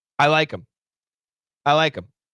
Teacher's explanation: The word him, many times the H sound is canceled.